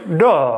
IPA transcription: ɖ